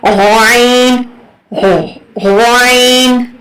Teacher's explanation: غرارے والی جگہ سے آئین